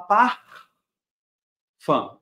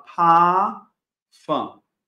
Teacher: pronuncia o r do pafan não o que acontece no alemão sempre que eu tenho uma letra R antes de uma consoante ou no final da frase ela é pronunciada como se fosse uma letra A